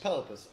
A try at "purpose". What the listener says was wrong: Purpose. Say purpose. Nah, it's Purpose. Why you keep doing brr? Purr. Say purr. Say purr. Purpose.